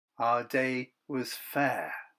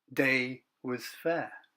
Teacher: Can you see that there's a weak syllable missing there? Instead of dum-dee-dee-dum, it ends on dum-dee-dum.